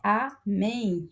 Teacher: A última sílaba é tônica, recebe o acento porque termina em em.